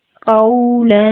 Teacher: قاف heavy letter ہے، اس کو پور پڑھیں گے اور قاف کے آگے واو ساکن ہے، اس لیے اس کو ہم نرمی سے ادا کریں گے